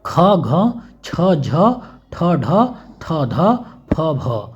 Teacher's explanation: जिसके उच्चारण में श्वास अधिक मात्रा में निकले और जिनमें हकार जैसी ध्वनि विशेष रूप से रहती है और श्वास अधिक मात्रा में निकलती है, तो उसे जो है हम लोग महाप्राण कहते हैं।